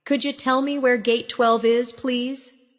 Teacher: In natural speech, could you sounds like could ya.